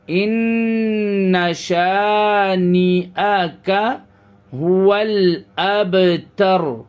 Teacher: را کے اوپر سے پیش ختم ہو جائے گا اور را کے اوپر سکون آ جائے گا، اور پھر را اپنے پہلے والے حرف کو ملا لے گا.